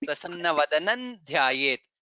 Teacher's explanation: But since there is Anuswara, when we join, it becomes Prasanna Vadanan Dhyayet.